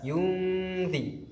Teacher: Liyundirakum, liyundi, yundi di sini terdapat hukum bacaan ikhfa sebab di sini ada nun sukun bertemu dengan dha. Yungzi dibaca samar dan juga berdengung